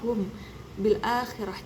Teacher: Cara membaca ikhfa syafawi ini dengan merapatkan kedua bibir. Tidak boleh ada sedikit pun kerenggangan pada 2 bibir. · maka mim disamarkan dengan gunnah dengan panjang 3 harokat atau 1,5 alif.